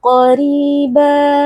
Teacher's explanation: Q qof Huruf tebal angkat pangkal lidahnya